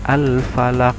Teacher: bacaannya al-falaq kalau diwaqaf ya, agak memantul. Qalqalah itu artinya adalah mantul, hurufnya mantul. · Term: qalqalah kubro